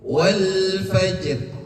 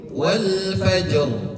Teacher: roh yang berharkat kasroh itu dibacanya tipis